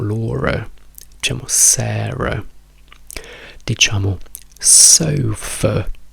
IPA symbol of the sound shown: ə